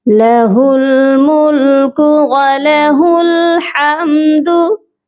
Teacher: हा की आवाज़ सीने से आएगी और हा को हम लाम के साथ मिला देंगे